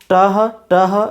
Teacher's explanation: ট এর সঙ্গে হ ধ্বনি যুক্ত হয়ে উচ্চারণ হচ্ছে টহ